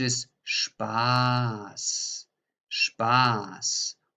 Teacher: you hear clearly with spas that the vowel here the a is long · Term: very long vowel